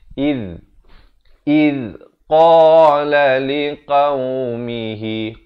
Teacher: Iz di hujung lidah. Hujung lidah itu keluar di antara dua gigi, menyentuh dua gigi di hadapan. Kalau boleh saya tunjukkan, lidah kita ini keluar di antara dua gigi atas dan bawah, menyentuh dua gigi di atas.